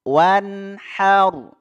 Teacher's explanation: ada nun sukun bertemu ha. Ini harus izhar, harus jelas. Izhar halqi.